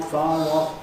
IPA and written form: ˈfɑːr ˋɒf (far off)